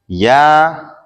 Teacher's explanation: یا زبان کے درمیان اور تالو کے درمیان سے ادا ہوتا ہے